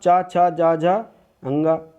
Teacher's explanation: पूरा चा वर्ग पूरा जो है ये तालु से बोला जाता है।